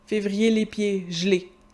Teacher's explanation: C'est un trait de prononciation qui n'est pas typique du français québécois, qui est typique de tous les français à l'oral, en langue plus spontanée. Les E neutres, sans accent, ont tendance à disparaître.